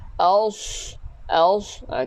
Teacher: jaga sad, tebalkan sad ni, bukan s